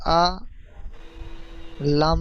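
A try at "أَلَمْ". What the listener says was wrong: আ টান হবে না, আলাম, আলাম।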